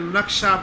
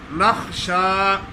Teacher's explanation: یقولون نخشا، خا کی بجائے کاف پڑھ لیتے ہیں، نقشہ پڑھ لیتی ہے، خا نہیں ادا کرتے. نقشہ نہیں ہے، نخشا ان تصیبنا دائرہ.